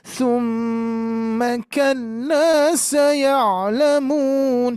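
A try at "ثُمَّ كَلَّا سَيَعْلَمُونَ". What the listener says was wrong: Summanya kurang dengung, Bu, kurang dengung.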